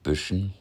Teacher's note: lip rounding. That classic North German pouty mouth.